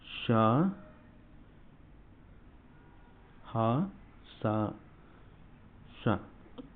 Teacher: ఊష్మాలు అంటే ఏంటి ఊది పలకబడేటివి